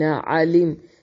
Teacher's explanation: علم یہاں پر میم ساکن کا اظہار ہے، اخفا نہیں کریں گے. تم الذین علمتم الذین یہاں پر ملذین نہیں پڑھیں گے بلکہ فوراً پڑھیں گے.